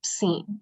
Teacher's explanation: the way that you pronounce it is like you're making the n Sound without putting your tongue on the roof of your mouth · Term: nasal n